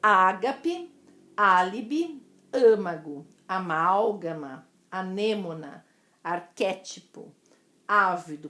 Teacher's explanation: Das proparoxítonas, antepenúltima sílaba tônica mais forte.